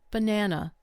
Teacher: The first and last vowels become weak. They turn into schwas. Only the middle syllable receives strong stress.